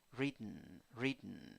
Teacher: here two syllables the first syllable is the stressed syllable